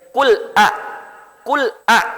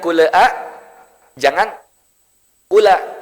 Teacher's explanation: Nah, ya, jadi intinya ini bacanya jangan ada kul'a atau kula. Cukup lamnya mati tanpa ada pantulan.